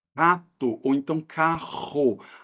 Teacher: exemplo na palavra carro o que acontece em algumas do Brasil esses dois RS ou então o r Inicial ele é pronunciado com um som de garganta característico